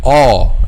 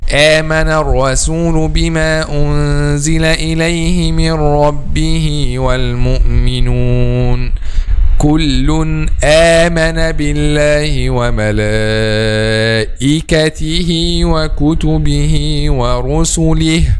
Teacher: the back of the tongue will not be raised when we pronounce letter Hamza, which means it will be a light letter.